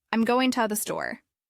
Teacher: The rhythm places stress on goin' and store, while the other words are light and quick.